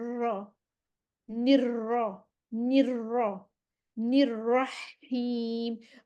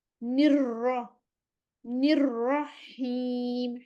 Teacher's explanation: रॉ इस वजह से 2 दफ़ा देखें, रॉ पे भी शद है ना, एक रॉ साकिन है, एक रॉ ज़बर के साथ है। निर्रा, एक रॉ हम साकिन पढ़ेंगे, ठहरेंगे, फिर ज़बर वाली रॉ पढ़ेंगे, तो ये खुद ही ऑटोमेटिकली हमारी ज़ुबान जो है वो 2 दफ़ा रोल हो जाएगी।